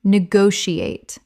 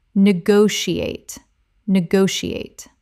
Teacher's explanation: 5 syllables with the stress on the second.